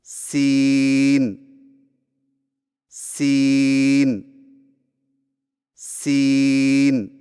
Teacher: जुबान की नोक को सामने वाले नीचे के दो दांतों के किनारों से मजबूती से लगाकर बारीक और सीढ़ जैसी आवाज में पढ़े